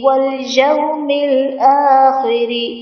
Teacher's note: واليوم میں واو ساکن سے پہلے زبر ہے، یہاں پر واو لین کا قاعدہ ہے، اسی لیے سے ہم بغیر کھینچے نرمی سے معروف پڑھیں گے، اور تمام حرکات زبر زیر پیش کو بغیر کھینچے پڑھیں گے۔